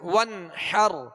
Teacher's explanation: حا کو وسط حلق سے ادا کریں گے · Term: اظہار